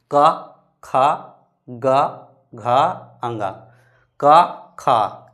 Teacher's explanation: तो क्या कहां से बोल रहे हैं? कंठ से।